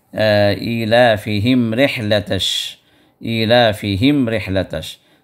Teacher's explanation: ایلافہم کے اندر ہا ہے جو آخری حلق سے نکلے گا، اور اس کے بعد رحلتش میں ہا ہے جو درمیانی حلق سے نکلے گا. تو ہا اور ہا میں فرق کرنا ضروری ہے.